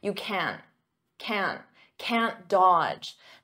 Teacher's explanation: I'm not going to pronounce that hard can't with the T.